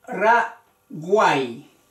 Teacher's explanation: la Y está asimilada como la I, como el sonido de la I latina. Entonces es una vocal débil.